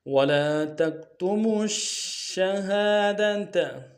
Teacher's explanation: ادا کریں گے، میم کو آگے شین کے سامنے لانا ہے، تفشی واضح کریں گے، تشدید زور دیں گے